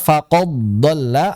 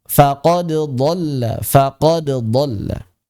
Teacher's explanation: Jadi qalqalahnya harus tampak karena dia wajib izhar.